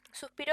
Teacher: suspiro es una palabra grave tiene su sílaba tónica en la del medio